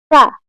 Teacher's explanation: উপরের দাঁত এবং নিচের ঠোঁটের সঙ্গে লেগে উচ্চারিত হবে